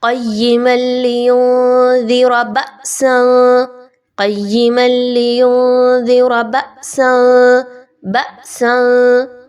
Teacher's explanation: हमज़ा के ऊपर जब भी जज़म की अलामत आएगी तो आपने उसको झटका देकर पढ़ना है। आवाज़ को नॉर्मल तरीक़े से नहीं पढ़ा जाएगा, बल्कि झटका देकर पढ़ा जाएगा।